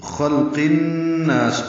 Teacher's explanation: نا الف مدہ ہے، دو حرکات لمبا کریں گے، سین سفیر سیٹی کی آواز سے ادا کریں گے. ولیکن میں واو ہونٹ کی نا تمام گلائی سے ادا کریں گے، لام باریک ہے، دو حرکات لمبا کریں گے، کاف بھی باریک ہے، نون مشدد پہ غنہ ہے.